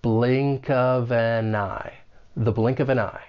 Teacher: we're just carrying that final consonant sound over to the next syllable